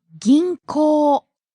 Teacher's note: There's a long O vowel at the end, so be careful.